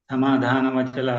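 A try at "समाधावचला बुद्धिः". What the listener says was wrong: ಇದು ಸಮಾಧಾನ ವಚಲ ಅಲ್ಲ ಸಮಾಧಾನ ಇಲ್ಲ ಅಲ್ಲಿ ಸಮಾಧಾವ ವಚಲ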